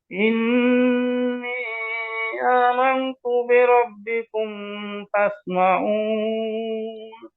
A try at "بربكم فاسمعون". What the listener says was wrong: মিম সুকুনের পরে ফা আসলে গুন্না নাই, শুধু দুইটা হরফ আসলে গুন্না আছে, মিম আর বা।